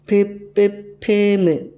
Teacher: 두 입술이 반드시 만났다가 떨어지는 소리들, 거기 입술 소리가 될 거고, 윗잇몸은 혀끝이 윗잇몸에 닿았다가 떨어지는 소리입니다.